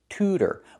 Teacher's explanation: The second T is a fast D. Tutor. But the first part is to not chew and not chew, but to tutor.